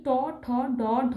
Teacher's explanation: জীব মূর্ধাকে স্পর্শ করে উচ্চারিত হচ্ছে সেই জন্য এগুলি হচ্ছে মূর্ধন্য বর্ণ